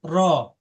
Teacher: জিহ্বার আগার উল্টা পিঠ তার বরাবর উপরের তালুর সঙ্গে লাগায় উচ্চারিত হয় র